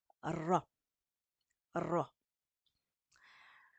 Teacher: on fait vraiment vibrer la langue à l'intérieur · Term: r roulé